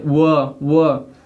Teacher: आपका जिह्वा जो है हल्का सा दंत को स्पर्श करेगा और आपका होठ जो है कि इसको बोलते वक्त कार्य करेगा, इसलिए इसको बोलते हैं दंठोष्ठ।